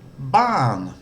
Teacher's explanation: has a falling tone so it starts off with a lot of energy and drops away